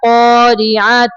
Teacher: را کے نیچے زیر ہے، را کو باریک پڑھنا ہے ، قارعة تنوین کو صرف ظاہر کرنا ہے، قارعة أو تحل